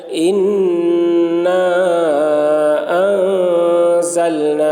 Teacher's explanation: مد منفصل کو 3 یا 4 الف کے برابر کھینچ کر پڑھیں گے، 1 الف کے برابر کھینچ کر پڑھنا بھی جائز ہے۔